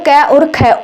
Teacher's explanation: जो क वर्ग आता है ना वो कंठ ध्वनि है